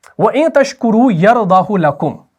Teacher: یہاں پر کھینچا نہیں جاتا، یہاں پر صلہ نہیں ہوتا بلکہ عدم صلہ ہوتا ہے